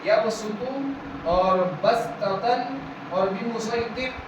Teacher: اس کے بعد یہاں پر یبسط بسطتن اور بمسیطر، یہاں پر آپ دیکھیں گے صاد کے اوپر سین لکھا ہوا ہے، صاد کے اوپر سین لکھا ہوا ہے. یہاں پر ہمیں صاد کی جگہ ان تینوں لفظوں میں صاد کے بجائے سین ادا کرتے ہوئے پڑھنا ہے